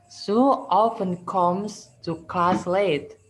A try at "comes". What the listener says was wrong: Comes, bukan comes ya. Comes. Come itu lebih ke A dibanding O ya. Jadi lebih dekat ke A. Jadi comes, bukan comes. Lebih ke A ya. Comes.